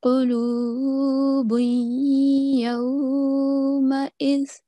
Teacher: And we have a thick qaf at the start. Then here we have to join the tanween with the ya mushaddad. Okay? And we have to make a slight nasal sound.